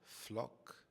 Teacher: When I say flock, notice how I pronounce the F sound in flock. It's quite an extended sound.